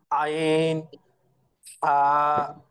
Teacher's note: কন্ঠনালী বা হলকের মাঝখান হইতে উচ্চারিত হয়